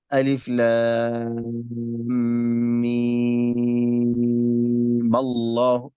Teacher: إذن الميم هنا في ألف لام ميم عند الوصل في سورة آل عمران إما تمد حركتين أو 6 حركات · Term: ميم آل عمران